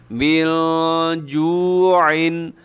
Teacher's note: شفیع ہے، یعنی غنہ کریں گے آپ، اطعمہم ایسے، من جوع، من میں نون ساکن کے بعد جیم ہے تو یہاں پہ آپ اخفا کریں گے